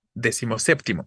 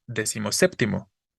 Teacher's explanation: unimos los dos elementos y recorrimos la tonicidad O más bien le quitamos la tonicidad a décimo y solo la está conservando séptimo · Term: sílaba tónica